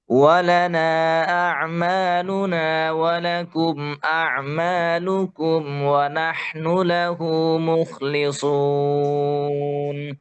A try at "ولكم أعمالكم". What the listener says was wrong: কাফটা আরেকটু সামনে থেকে ওয়ালাকুম আমালুকুম যেন লুকুম কফের কাছাকাছি না হয়ে যায় হ্যাঁ উপরে জিহ্বার গোড়া উপরে শক্ত জায়গা কু কু লাকুম লাকুম লাকুম দীনুকুম ওয়ালাকুম আমালুকুম ওয়ালানা